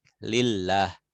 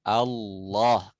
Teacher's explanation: Kalau tipis lidah belakang nggak naik. Lillah. Kalau tebal Allah. Langit-langit belakang itu naik gitu. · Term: tebal dan tipis